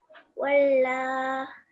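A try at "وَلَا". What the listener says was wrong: So not walla because there's no shadda, but wala.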